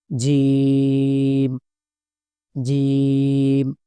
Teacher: শক্ত করে জিহ্বার মধ্যখান থেকে উচ্চারণ হবে